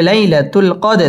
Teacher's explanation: জবরের বাম পাশে জজম ওয়ালা ইয়া, লিনের হরফ তাড়াতাড়ি পড়তে হবে।